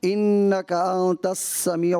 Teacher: انک انت السمیع, یہاں سین ہے, سین کی ادائیگی میں یاد رکھیے گا کہ سیٹی کی آواز آتی ہے اس میں